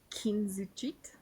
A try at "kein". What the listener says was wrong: the key we don't do the keen thing when the E is before the I. Kein. If the E is before the I, it's an I sound.